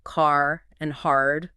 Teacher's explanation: Take rhoticity, for example. Americans pronounce that R sound in words like car and hard